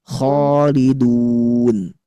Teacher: Fathah bertemu alif. Alifnya harus dibaca tebal. Khalidun. Nggak boleh itu kha itu tipis.